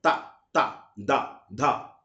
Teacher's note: దంత్యములు అంటే పళ్ళతో వచ్చేవి